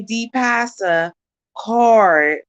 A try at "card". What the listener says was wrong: you don't pronounce an R in card at all.